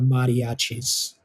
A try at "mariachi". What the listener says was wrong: No, the R is pronounced a D. Like, how do you say my mom's name? Elvira. Elvira. See, you say it like a D.